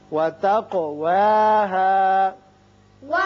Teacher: قاف چونکہ مجزوم ہے اس لیے اس کی صفت قلقلہ ادا کریں گے